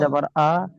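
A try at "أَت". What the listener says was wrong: হামজা তা যাবার আত, হামজা তা যাবার আ নয়, হামজা তা যাবার আত, হামজা তা যাবার আত, তাজে তি, আত্তি।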